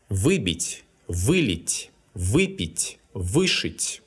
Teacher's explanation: don't forget that the prefix «вы» is stressed when it's a part of a perfective verb.